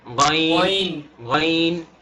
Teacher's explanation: শুধু প্রথমে গ যখন বলবো সেই গ অংশটুকু গলার ভেতর যাবে, এর পরের অংশটুকু গলার ভেতর যাবে না।